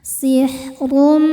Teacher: Huruf ro dibaca tafkhim karena berharakat dommah tanwin. Maka rnya ini dibaca dengan tebal.